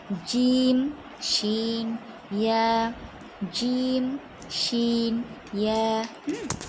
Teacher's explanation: 6 নং মাখরাজ জিহবার মধ্যখান তার বরাবর উপরের তালুর সঙ্গে লেগে উচ্চারিত হয় জিম, শিন, ইয়া।